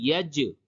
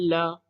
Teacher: یہ جیم ہے، یہ حروف قلقلہ، یہاں پہ قلقلہ ہوگا، یہ لام ہے، اس پہ قلقلہ نہیں ہوگا۔